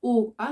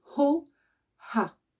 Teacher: on va mettre comme un H aspiré au début de ces 2 sons, hein. C'est pas O, A, c'est Ho, Ha.